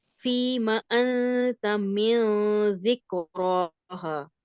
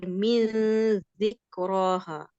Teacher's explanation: زبان کی نوک نیچے نیچے رہے, تو پھر آپ جی کا اخفا جو ہے وہ باریک ہوگا